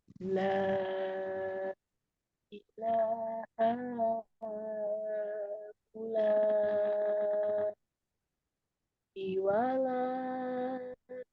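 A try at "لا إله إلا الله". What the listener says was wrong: Masya Allah, tabarakallah. Sudah oke. Konsistennya Bu sudah bagus ya. Pertahankan ini.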